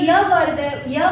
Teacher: जो य वर्ण है इसका उच्चारण स्थान होता है तालु।